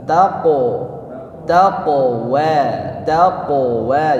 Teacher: Qaf dipantulkan dengan posisi tebal.